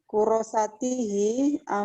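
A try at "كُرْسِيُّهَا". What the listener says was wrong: Kurosatihi bukan ya Bu ya. Ada ha di sini. Kurosatuha ya. Kurosatuha.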